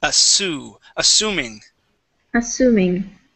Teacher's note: here you said assuming using an sh sound